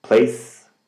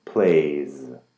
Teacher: the S does not vibrate but the Z does